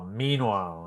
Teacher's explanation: Stress on the first syllable in meanwhile.